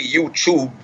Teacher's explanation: I'll still say YouTube with a ch sound